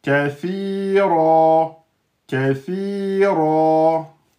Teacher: quand on s'arrête sur tenwin, hein, on ne peut pas terminer par tenwin. On termine par une prolongation de temps. Donc kathiran, c'est kathira.